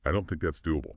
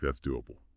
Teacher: Sometimes when we pronounce words ending in able after a vowel sound like the oo and do, a tiny oo sound, a glide slips in to help the transition.